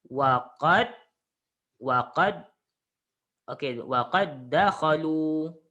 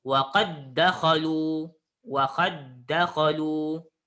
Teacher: Okey, dal pertama baris sukun dan yang kedua berbaris atas. Jadi bila bertemu dua dal, awak kena gabungkan, masukkan dal yang pertama ke dalam yang kedua. Jadi awak kena tasydid ke yang kedua. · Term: idgham mutamatsilain